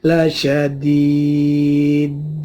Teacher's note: qalqalah kubro, dalnya dimatikan karena waqaf ya